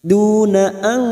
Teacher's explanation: Duna an nun sukun bertemu ta ikfa hakiki, kita samarkan bunyi nun sukun dan mendengung selama 2 atau 3 harakat